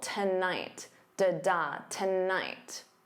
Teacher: So notice that syllable stress, the first syllable is unstressed, so to becomes that unstressed ta, and the night is your stressed syllable